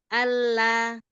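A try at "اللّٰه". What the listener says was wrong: Arah suaranya dari a ke la itu jangan digeser. Jadi jangan Allah gitu. Itu kan geser dari arah suara. Allah satu arah saja.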